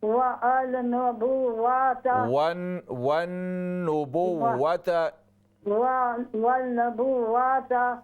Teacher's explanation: نون مشدد ہے، غنہ بھی کریں، اور نون پر زبر نہیں ہے، پیش ہے۔